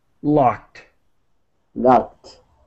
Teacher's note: the ED is pronounced as a T as quickly as possible.